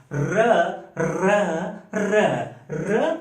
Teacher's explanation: र को लुंठित कहते हैं।